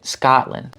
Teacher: his first vowel is very open